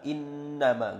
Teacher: gunnah musyadadah berdengung dua harakat